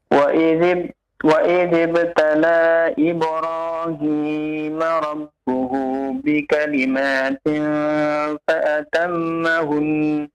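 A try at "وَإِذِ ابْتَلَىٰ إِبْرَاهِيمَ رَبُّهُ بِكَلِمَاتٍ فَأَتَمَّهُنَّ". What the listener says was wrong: Panjang pendeknya disempurnakan ya. Wa idzibtala, dibaca 5 harokat ya. Fa'atammahun. Nun bertasydid ya, ditahan ya. 2 harokat.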